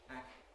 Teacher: while the velar closure is held, the tongue tip makes its movement and contacts the alveolar ridge. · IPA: [æk̚t-]